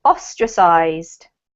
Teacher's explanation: first one this is ostracized okay ostracized yeah ostracized has the the emphasis on the first syllable